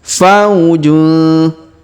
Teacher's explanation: Perhatikan huruf fa kita ayun sekali karena terdapat waw sukun di depannya.